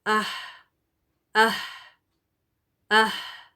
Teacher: ہا، جو کہ deepest part of the throat سے نکلتا ہے، بالکل آخر باٹم آف دا تھروٹ سے نا، حمزہ ہا. · ہا کو ساکن کر دیں، پھر اس سے پہلے الف زبر لگا دیں، اہ اہ. ہوا آنی چاہیے ہا کے ساتھ، ہا ساکن کے ساتھ